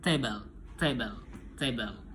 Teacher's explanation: E penjelasannya itu place of articulation alveolar eh ujung lidah ujung lidah itu menyentuh al alveolar rate atau gusi bagian atas. Ah, seperti manner of articulation plosif eh voing voiceless.